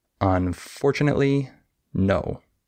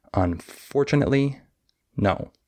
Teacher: I have stress on four unfortunately but then all of the next three syllables after it are all syllables that don't have a lot of stress and then the word no is stressed